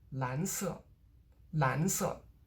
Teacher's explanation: The 色 gets de-stressed